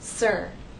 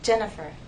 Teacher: It's stressed in sir, but it's unstressed in my name, Jennifer.